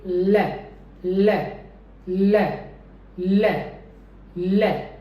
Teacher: लैटरल का मतलब है कि जो मेरी साइड्स हैं टंग की वो फ्री रहेंगी और वहाँ से एयर पास हो सकती है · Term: voice lateral approximant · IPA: /l/